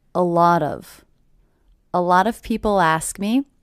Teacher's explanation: with the stress happening on the middle word